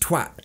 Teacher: don't even pronounce the T on the end, just twat. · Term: advanced level British English